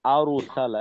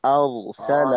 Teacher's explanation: وأرسل عليهم طيرا أبابيل এখানে আর সালা, আর সালা, এটা এখানে অনেক সময় যেটা হয় যে ঠোঁটটা একটু গোল হয়ে যাওয়ার কারণে أر রয়ের উচ্চারণটা আর না হয় আরো, একটা রয় একটা ওকার মুখী ভাব চলে আসে, আরো সালা এমনটা হয়ে যায়।